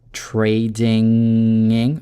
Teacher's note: Велярный звук н, то есть получается вы в горле зажимаете н, через нос у вас проходит воздух, не через ротовую полость, и соединяете trading.